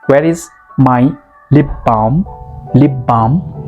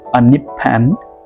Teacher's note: Okay, when you say p or b, your lips come into contact. So there's no need to bring your lips in contact 2 times.